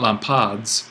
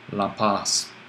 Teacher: Dental plus sibilant, this S, equals sibilant in the end. The sigma wins out. So if we go back here, it's not lampads, but it's going to be, again, identical to our nominative lampas.